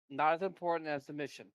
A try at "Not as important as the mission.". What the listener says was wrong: Sorry, you need to enunciate because it sounded like you said it's not as important as submission.